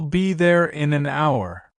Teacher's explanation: Even though hour starts with the letter H, the H is silent, so it actually begins with the vowel sound of.